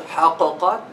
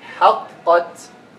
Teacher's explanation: When we merge them, we're gonna pronounce this first قاف without a قلقلة. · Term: مدغمة